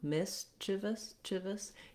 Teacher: You can hear how there's just barely any vowel sound in those unstressed syllables